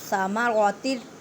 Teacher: تنوین کے بعد را ہے، اب یہاں پہ ادغام بلا غنہ، مینس کہ غنہ نہیں کرنا۔ ادغام کا مطلب ہوتا ہے ایک حرف کو دوسرے حرف کے ساتھ ملانا، یہاں پہ ادغام بلا غنہ ہو رہا ہے۔